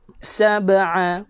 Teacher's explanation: Maka qalqalah kecil, sugra. Kecil je lantunan dia tuan-tuan. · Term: qalqalah sugra